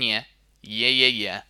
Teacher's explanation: we need the twang that sharp cutting quality